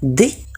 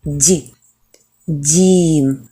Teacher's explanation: слові дім дь він м'який Чому він м'який тому що і звук і пом'якшує попередню приголосну тому не д а дь дім наступна в слові дім голосна · в слові дим - це д він твердий а в слові дім дь він м'який Чому він м'який тому що і звук і пом'якшує попередню приголосну